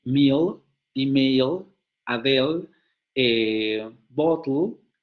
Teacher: Pero cuando esa consonante aparece al final de palabra, como por ejemplo en meal, email, Adele, bottle, esa consonante se velariza en inglés. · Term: dark L